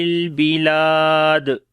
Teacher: جب رکیں گے دال کے اوپر قلقلہ کریں گے جو کہ سٹرونگ قلقلہ ہوگا